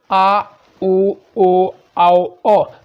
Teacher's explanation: इसमें जो दोस्तों जीभ का जो है पीछे वाला भाग काम कर रहा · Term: पश्च स्वर